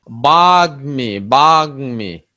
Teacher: ম ফলা যুক্ত হলে ম এর উচ্চারণ বজায় থাকে। বজায় থাকে মানে কি, মর উচ্চারণটা স্বাভাবিকই থাকে।